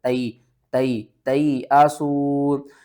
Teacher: تا یا زبر تئی، حمزہ زبر آ، تئی آ، سین واو پیسو، تئی آسو۔ یا ساکن سے پہلے زبر ہے، حروف لین ہے، تھوڑا سا آپ نے جلدی سے پڑھنا ہے